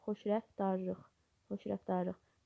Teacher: T samiti tələffüz zaman D samitinə çevrilir və nəticədə xoşrəftarlıq sözündə kar zingildi samit cütlüyü yoxdur.